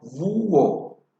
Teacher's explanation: La fuerza de la voz recae en la vocal U, seguida de H y después O. Igual se tilda. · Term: hiato